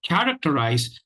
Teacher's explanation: the stresses on the first syllable, that is the primary stress syllable. The other three syllables are unstressed.